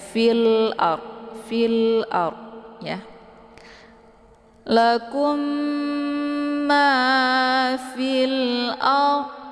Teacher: saat melafadzkan alif lam al-qamariyah ini yaitu lamnya dibaca jelas, ya. Jelas bunyi L-nya. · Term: idhar qamariyah